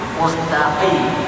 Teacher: Mustaqim ya ke belakang sedikit, ya, makhraj qaf itu ke belakang sedikit.